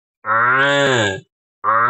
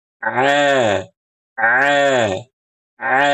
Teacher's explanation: kalau ain yang fasih suaranya enggak masuk ke hidung.